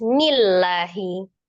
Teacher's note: Sebelumnya kasrah, maka dibacanya tipis